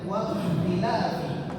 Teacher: Wa dibaca tebal ya, karena huruf qa merupakan huruf isti'la.